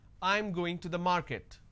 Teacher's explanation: this is a statement and it's a flat intonation